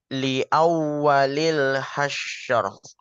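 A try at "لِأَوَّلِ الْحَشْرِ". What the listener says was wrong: roknya jangan sampai tipis. Nah, tapi isinya terlalu lama ya. Enggak sesuai temponya. Li awwalil hasyr.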